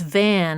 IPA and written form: væn (van)